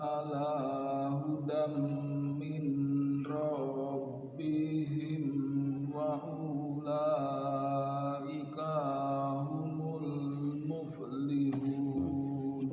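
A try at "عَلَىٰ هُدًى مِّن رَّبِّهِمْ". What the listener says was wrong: ulam mirra langsung ya, hudam mirra. Nah, itu namanya idgham bila gunnah. Hudam pertama idgham bi gunnah, yang keduanya idgham bila gunnah. Ulaika ala hudam mir rabbihim wa ulaika humul muflihun. Kaknya pendek ya. Sekali lagi ulaika ala hudam langsung masuk ke mim. Dari mir rabbihim langsung masuk ke ra. mir rabbihim mirra ya mir rabbihim wa ulaika humul muflihun.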